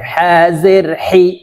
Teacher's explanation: হলকের মধ্যখান থেকে চাপ দিয়ে হা উচ্চারণ করতে হবে।